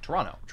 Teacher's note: The second T is silent.